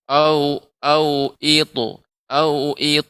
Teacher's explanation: Kemudian pada kata ta, qalqalah pada huruf ta juga lebih ditebalkan Ibu